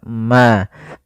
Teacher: mim mati itu kan makhrajnya daripada bibir kita maka mim itu kan rapat Ma maka di sini harus jelas suara mimnya tidak boleh ditahan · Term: izhar syafawi